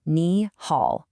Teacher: The correct flow is a rising tone followed by the dipping tone.